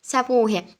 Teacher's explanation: U səsindən gedir. Səbuhiyə sözündə də u uzanır. Həm qalındır, həm dodaqlanan və qapalıdır.